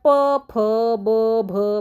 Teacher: ओष्ठे म्हणजे ओठाचा वापर करून, ओठाचा वापर केल्याशिवाय तो वर्ण निघतच नाही. तर तो कोणता आहे बघा, तर प, फ, ब, भ बघा, ओठाचा वापर केल्याशिवाय ते निघू शकत नाहीत. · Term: ओष्ठवर्ण